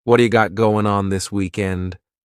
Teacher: This is really typical of American English where a T that's surrounded by vowel sounds is going to change to a D. It's called a flapped T and it just rolls off your tongue in a smooth way.